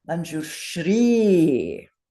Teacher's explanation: I want to hear a better long vowel at the end. 2 beats.